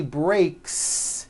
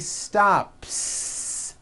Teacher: the S you add also remains unvoiced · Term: unvoiced s